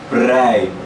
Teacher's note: Devido ao P, o P é um pouco soprado.